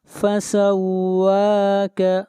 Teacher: واو کو کھینچ کر پڑھیں گے ایک الف کے برابر، واو کے اوپر کھڑی زبر ہے۔